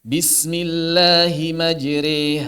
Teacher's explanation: kubra ada imalah Sugra Apa itu imalah kubra imalah Kubro adalah imalah yang miringnya itu benar benar sempurna di pertengahan antara fathah dengan kasrah · memiringkan suara fathah ke arah kasrah dan suara alif ke arah ya